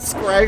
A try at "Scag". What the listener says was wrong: Gag. It's Gag. There's no R.